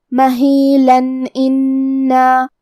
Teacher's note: ہم یہاں تنوین ظاہر کریں گے اور اسے نون ساکن پڑھیں گے اور بغیر غنہ سے یہ حکم کو ادا کریں گے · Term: اظہار